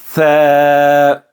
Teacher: ث، اب جو ث ہے یہ سیٹی والا حرف نہیں ہے، وداؤٹ وسل اسے پڑھیں گے، سیٹی کے بغیر، تو زبان جو ہے وہ اوپر والے دانتوں سے لگے گی